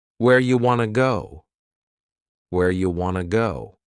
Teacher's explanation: You becomes you and want to becomes wanna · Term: reduction